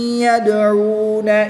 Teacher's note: واو ساکن سے پہلے حرف پر پیش واو مدہ 1 الف یعنی 2 حرکات کے برابر کھینچ کر پڑھیں گے۔